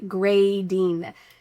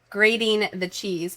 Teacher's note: in American English, we love for T's surrounded by vowels to sound like a D sound